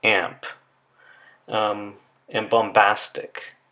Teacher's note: And we do have words like amp and bombastic. So there, the nasal sound is agreeing in place of articulation with the following stop